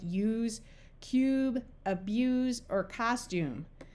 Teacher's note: Since this silent E would make this U have its long sound, it could have either long sound, the U sound, or the OO sound. Words with the U sound, where you can clearly hear the Y part, are words like use, cube, abuse, or costume.